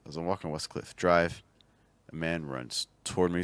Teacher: And one of the things that's kind of happening with your stresses is that we're starting off two thought groups where our stress both times is falling towards the end